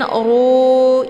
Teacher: Kemudian ru ini ra-nya hukumnya dibaca tebal ya karena harokat ra itu berharokat zummah. Kemudian untuk ru-nya dibaca panjang 2 harokat karena ada waw sukun sebelumnya harokat zummah. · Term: mad tabi'i zahiri